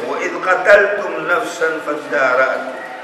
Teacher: Mwenyezi Mungu atuambia, wa idh qataltum nafsan fadara'tu. Hapa fihi idghamu dal fi ta